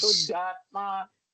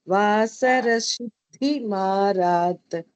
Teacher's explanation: Middle of the tongue, upper palate. We should not take from the tip of the tongue to pronounce as su. It is not su.